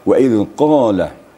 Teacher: Kalau ini qaf besar, itu makharijul hurufnya atau makhrajnya pada pangkal lidah. Jadi wa idh qala, diterasa getarnya pada pangkal lidah.